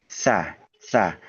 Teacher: tempat pengucapannya itu memang masih di gigi seri atas ya daerah gigi seri atas dengan lidah pertemuannya itu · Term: huruf tsa